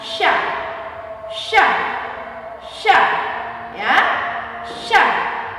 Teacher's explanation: lidah bagian tengah dengan langit-langit bagian atas. Ya, lidah bagian tengah dengan langit-langit bagian atas.